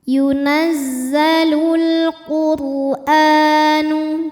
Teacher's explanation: cara membaca rnya adalah dibunyikan dengan tebal dengan cara mengangkat pangkal lidah kita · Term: tafkhim